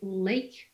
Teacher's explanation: the tip of your tongue is a little bit curled, and you pronounce O instead of L. You say O. You see, so you've got a different pronunciation at the articulatory level. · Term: dark L